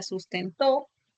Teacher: en la palabra sustentó, en la palabra rapidez, está acentuada la última sílaba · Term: palabra aguda